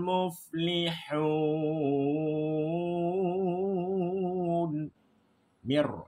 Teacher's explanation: idgham bila gunah, masuk tidak boleh dengung